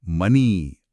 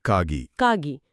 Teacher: ಪದದ ಕೊನೆಯಲ್ಲಿ ಎ ಸ್ವರ ಬರುತ್ತಲ್ಲ, ಅದು ಈ ಆಗಿ ಬದಲಾಗುತ್ತಂತೆ. ಅಂದ್ರೆ ಮನೆ ಅನ್ನೋ ಪದವನ್ನ ಅವರು ಮನಿ ಅಂತಾರಂತೆ.